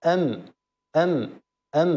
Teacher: الميم الميم هذا هو مخرجها ام ام ام اذا كانت ساكنه فهي بانطباق الشفتين والباء هي ايضا من الشفتين اذا كانت ساكنه فهي بانطباق الشفتين